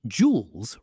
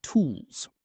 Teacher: Round your lips for that long ooh sound